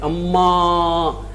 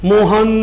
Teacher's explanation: तो वह जिस स्वर के साथ समय ज्यादा दे देते हैं जिस स्वर को, तो वहां पर इस प्रकार के अंक का प्रयोग कर देते हैं। अम्मा, तो आ की मात्रा लंबी खींच ली, तो आ की मात्रा लंबी खींचने की वजह से वहां पर सही में तो प्लुत स्वर का प्रयोग हुआ